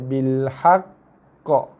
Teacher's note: Okey, kemudian ada pula sabdu, so dia jadi qalqalah akbar. Tekan dulu pada huruf qaf, barulah lepaskan lantunannya